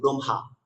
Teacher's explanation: জন্য ম সাথে হ যুক্ত হয়েছে, আমরা মকে আগে রেখে হটাকে পরে করব